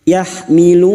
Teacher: Karena kami memilih untuk mewakafkan di sini, kami memperpanjang lissukun mad arid sebanyak empat hitungan